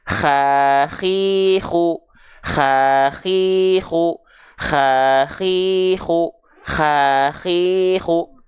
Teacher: karakteristik nafasnya seperti dengkuran seperti Ya seperti mendengkur seperti ngorok Nah maka Enggak aneh ketika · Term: huruf ko